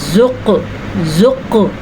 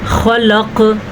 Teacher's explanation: زبان کی جڑ کہاں پہ لگ رہی ہے، اوپر تالو کے ساتھ ٹچ ہو رہی ہے تو قاف لگ رہا ہے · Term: حرف لہاتیہ